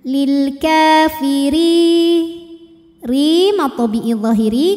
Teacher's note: ro dibunyikan secara tarqik karena barisnya di bawah maka dibacanya tipis maka lidah datar ringan